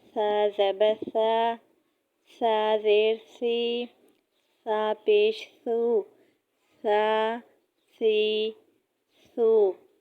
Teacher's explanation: زبان کی نوک ثنایا علیہ کے سرے سے لگے اور یہ حروف اس کو نرمی سے ادا کریں اور اس میں سیٹی کی آواز نہ آئے